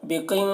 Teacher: بِقِنْطَارٍ، یہاں پر دیکھیے قاف کو پر پڑھیں گے، قاف حروف مستعلیہ میں سے ہے، اور یہاں پر نون ساکن کے بعد تو ہے حروف اخفا میں سے، نون میں اخفا کریں گے